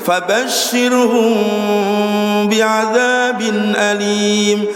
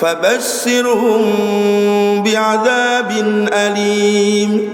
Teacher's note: Jadi mim hunna, bukan mim muzhar. Kalau muzhar itu jelas mimnya, tapi mimnya itu bukan mim muzhar, tapi mimnya dengung.